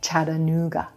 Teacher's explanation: Then we have the G consonant, g, g, and a schwa for our final syllable. Very quick.